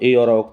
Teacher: ए और ऐ का उच्चारण स्थान कंठ प्लस तालू है